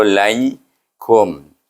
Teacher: ya ni sebelumnya baris di atas, maka kita kena baca dengan lin, iaitu satu harakah je. Lai, lam tu digabungkan dengan ya yang mati, bunyinya lin, iaitu laikum.